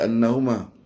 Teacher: Wajibul ghunnah. Dengung bagi lama.